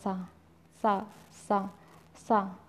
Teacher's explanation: दंत में दंत में टच हो रहा है सीधे-सीधे मुख से बोला जाता है सीधे-सीधे जीभ उल्टी पुल्टी नहीं होती है